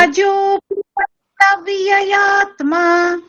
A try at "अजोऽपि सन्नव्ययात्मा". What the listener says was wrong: ওই ইয়াতে গলাটা নামিয়ে দিতে হবে। अजोऽपि सन्नव्ययात्मा